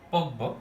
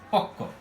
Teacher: অর্থাৎ এই যে ক, এটার পরিবর্তে বা এটার কারণে এই কটা কি হয়ে গেছে? বটা পরিবর্তন হয়ে ক হয়ে গেছে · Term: প্রগত সমীভবন